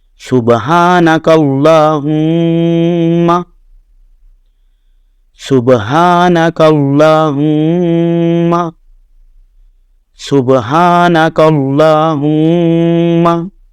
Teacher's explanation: یہ وسط حلق سے ہا یہ آواز نکلتی ہے، اور لام پر پڑا جائے گا، اس کے اوپر کھڑا زبر ہے جس کی مقدار جو ہے وہ ایک الف کے برابر ہے، یعنی 1 سے 2 سیکنڈ آواز لمبی ہوگی۔ میم کے اوپر شد ہے، نون مشدد کی طرح یہاں بھی غنہ ہوگا، آواز 1 سے 2 سیکنڈ ناک میں جائے گی۔